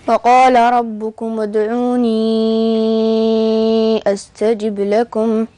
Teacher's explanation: قرأت فيه ياء الإضافة بالإسكان مع المد الطويل لأنه جاء بعدها همز قطع مضموم، هذا مذهب ورش رحمه الله تبارك وتعالى.